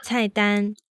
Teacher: the fourth tone doesn't go all the way down. It only goes about halfway